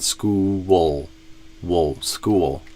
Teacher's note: See if you can add kind of a W and then a dark L after that. So go school just like you did, but then go wool at the end.